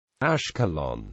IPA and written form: æʃkɛloʊn (Ashkelon)